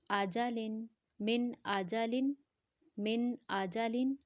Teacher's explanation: اظہار میں ہم جو ہے وہ غنہ والا ساؤنڈ نہیں کریں گے